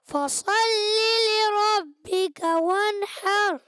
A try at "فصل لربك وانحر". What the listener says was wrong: فصلی میں صاد اور موٹا کریں، فصلی لربک وانحر،